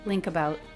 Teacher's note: Ending K links right onto the next sound, the schwa.